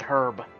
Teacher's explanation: Americans might drop the H, but Brits would say it.